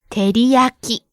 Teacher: Each syllable gets the same amount of stress.